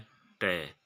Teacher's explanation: मूर्धा उच्चारण स्थान से उत्पन्न होने वाला व्यंजन है ट